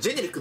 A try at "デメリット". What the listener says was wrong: ジ ェ ネ リ ッ ク み た い な 発 音 で 言 う の や め て く れ へ ん 。